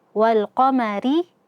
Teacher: Rinya tipis tarqiq karena dia kasrah.